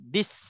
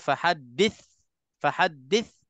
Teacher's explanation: Itu terang-terangnya jadi huruf sin dah tu. Sebab kalau kita sebutkan tha betul-betul, dia tak ada laluan angin